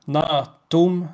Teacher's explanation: med långt a och långt t